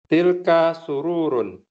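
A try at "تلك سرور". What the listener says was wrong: Masya Allah, mumtaz.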